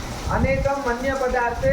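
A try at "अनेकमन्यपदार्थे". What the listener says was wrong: अनेकम मन्य पदार्थे। काहे सूत्र को तोड़ते हो? अनेकम फिर मन्य नहीं, अनेकम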